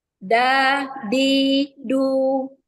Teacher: Jadi ujung lidah ya, ujung lidah, bagian yang ujung lidah kita yang ditempelkan dengan gusi tempat tumbuh gigi seri atas. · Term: huruf dal